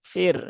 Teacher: kaidah ro dibaca tipis ya Bukan dibaca tebal